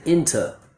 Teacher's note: But a native speaker will use the schwa and say in-tuh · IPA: / ˈɪn tə /